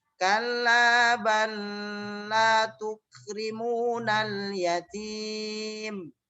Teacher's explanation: Kalla balla tukrimunal yatim. Karena lam yang pertama dimasukkan ke dalam lam yang kedua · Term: idgham mutamasilain